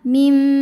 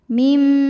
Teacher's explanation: bunyi nun sukun diganti dengan bunyi mim sukun. Jadi yang awalnya bunyi min jadi mim disertai bunyi dengung. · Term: iqlab